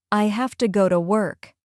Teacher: Hafta and Ta are the connected sounds that make your English sound smooth.